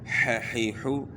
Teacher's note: ح کی آواز بھی گلے کے درمیان سے ہے